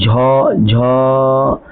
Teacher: झ तो आपका जो होठ होता है ना, सॉरी जीभ जो होता है वो तालु में जाके सटता है